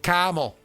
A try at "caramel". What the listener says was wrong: there's R's in that word. It's caramel. Caramel.